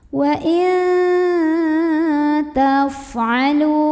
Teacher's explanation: Wa in ada ikhfa aqrab, karena ada nun sukun yang ketemu sama huruf ta. Maka cara membunyikan nun sukunnya ini adalah samar-samar, mau bilang ta. Jadi nggak jelas in, tapi il, mau bilang ta sambil berdengung.